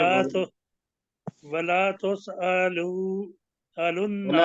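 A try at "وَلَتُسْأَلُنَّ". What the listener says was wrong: वला नहीं, वाला वाला पढ़ना है, वाला तुसअलुन्ना।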